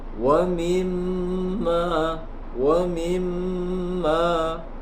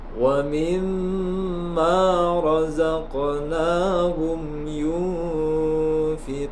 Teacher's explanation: Lamnya dibaca jelas bil ghaibi, bil ghaibi wa yuqimuna as-salata wa mimma razaqnahum yunfiqun. Wa mimma ada mim tasydid disebut dengan gunnah, panjangnya sekitar satu alif lebih sedikit. Wa mimma, wa mimma ditahan dulu baru dilepas.